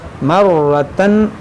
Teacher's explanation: یہ را پر زبر ہے تو موٹا پڑھیں گے